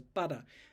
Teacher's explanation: this is the IPA symbol for an alveolar tap when your tongue just Taps up in there